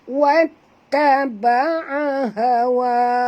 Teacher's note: Ha di sini ha simpul, jadi kena baca daripada dalam halqum.